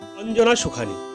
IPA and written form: əndʒəˈnaː sʊˈkʰaːni (अंजना सुखानी)